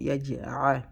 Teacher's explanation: Don't say yaj'a, but a. Qalqala. We bounce the jim.